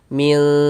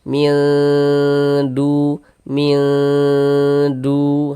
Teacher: Maka cara membacanya itu dibaca samar kemudian didengungkan. Nah, digunahkan. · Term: ikhfa hakiki aqrab